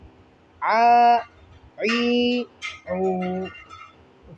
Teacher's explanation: عین کھڑا زبر آ، عین کو حلق سے ادا کریں گے۔ عین کھڑی زیر عی، عین الٹا پیش عو، آ، عی، عو۔